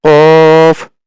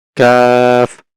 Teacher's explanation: কফ হচ্ছে একটু পিছন দিক থেকে কাফ হচ্ছে একটু সামনের দিক থেকে · তার থেকে একটু আগে এসে তার থেকে আরেকটু আগে এসে উপরের তালুর সঙ্গে লাগিয়ে কাফ। তাহলে কফ হচ্ছে একটু পিছনের দিক থেকে জিহ্বা একটু পিছন থেকে উপরের তালুর সঙ্গে লাগবে। আর কাফ হচ্ছে আমাদের জিহ্বার একটু সামনে এসে উপরের তালুর সঙ্গে লেগে উচ্চারণ হবে।